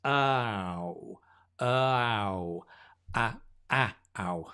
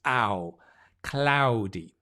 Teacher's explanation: you try and get the ow instead of ah it's not a single vowel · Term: diphthong